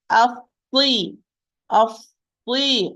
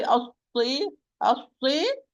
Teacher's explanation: and do not move the lips. Do not say as-si, as-si. You're giving a hint of Dhamma. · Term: Saad with kasra